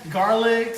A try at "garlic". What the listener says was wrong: And we don't say, you don't put an S on garlic.